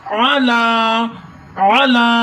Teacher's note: عین کو حلق کے نچلے حصے سے ادا کرتے ہیں